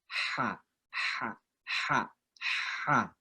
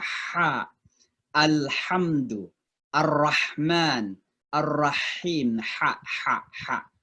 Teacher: ha ini salah satu huruf halaqah yang tengah. Artinya, kalau penyebutannya itu betul-betul di tengah tenggorokan kita.